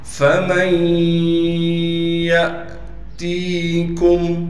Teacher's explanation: نون کو ہم ختم کر دیں گے، بالکل یا میں ملا دیں گے نون کو، تو ہم میم کو پھر یا کے ساتھ ملائیں گے غنہ کے ساتھ۔ پھر یا پر تشدید ہونے کی وجہ سے تھوڑا ٹھہراؤ کرنا ہے۔ · یا پر تشدید ہونے کی وجہ سے تھوڑا ٹھہراؤ کرنا ہے۔ یا کے بعد الف لکھی ہوئی ہے لیکن یہ الف نہیں ہے اس لیے کہ الف ہمیشہ خالی ہوتی ہے، اس پر ساکن آنے کی وجہ سے یہ حمزہ بن گیا۔ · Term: ادغام